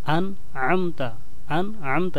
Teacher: হামজা শক্ত করে, আইন নরম করে, আন'আমতা, আন'আমতা, এখানে যেন একবার আমি হামজা পড়েছি আর একবার আইন পড়েছি, এটা যেন বোঝা যায়।